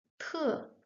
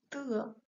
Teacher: the strong 特 with air flowing out and a bit softer but still not that weak 的 with no air flowing out